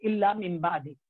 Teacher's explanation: نون ساکن کے بعد با آیا تو ہم نے پڑھا میم بعد